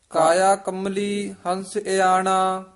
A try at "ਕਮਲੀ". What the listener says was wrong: ਕਮਲੀ ਕੰਬਲੀ ਕਸ ਕੇ ਨਹੀਂ ਬੋਲਣਾ, ਕਾਇਆ ਕਮਲੀ ਹੰਸ ਇਆਣਾ।